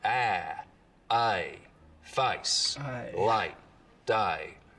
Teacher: the diphthong in face starts real low down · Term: face lowering